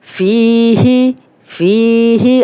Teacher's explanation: اب یا مد ہے، جزم والی یا، پیچھے زیر، 2 حرکات لمبا کریں گے